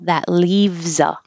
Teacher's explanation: this S sounds like a Z because your voice has been on the whole time for l, e, v, z, leaves.